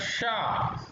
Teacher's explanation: ऊष्म स्वर जो मूर्धा से उच्चारित होता है वह आएगा शा।